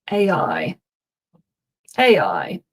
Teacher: we get a sort of a linking, I guess it's an intrusive yeah sound, really.